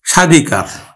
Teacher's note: আমরা কিন্তু উচ্চারণ করি স্বাধিকার, আর আমরা দন্ত স্বয়ের উচ্চারণ করি না, তালব্য স্বয়ের উচ্চারণ করি